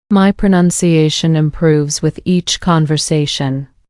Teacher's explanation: pronunciation has four syllables with stress on the fourth one and improves has stress on the second syllable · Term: stress on the 4th, stress on the 2nd syllable